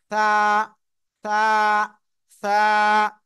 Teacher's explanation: জিহ্বার আগা সামনের উপরে দুই দাঁতের আগার সঙ্গে লাগিয়ে নরম করে আমরা উচ্চারণ করব